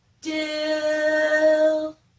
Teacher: The I sound in dill is a higher sound.